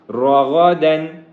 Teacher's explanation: را کو بھی موٹا کریں گے، غائن کو بھی موٹا کریں گے، اور دال 2 زبر دن کے اوپر اخفا نہیں ہوگا، کیونکہ اگلا جو حرف ہے وہ ہا ہے، وہ حروف حلقی میں سے ہے، اس لیے روغا دن کو روغا دن ایسے نہیں کریں گے، بلکہ روغا دن کریں گے، اظہار کریں گے، اخفا نہیں کریں گے۔